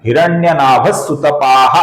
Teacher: इस विसर्ग के आगे सुतपा का स आने के बाद इस विसर्ग का भी हल्का सा स बन जाता है, हिरण्यनाभ सुतपाहा होता है।